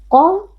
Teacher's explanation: huruf tafkhim kita baca dengan mengangkat pangkal lidah